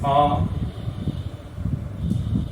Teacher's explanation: उदाहरण के लिए देखें आ, ये ह्रस्व है लेकिन दीर्घ है, इसको कहेंगे आ। इसमें हमारा जो मुंह है वो ज्यादा खुलता है।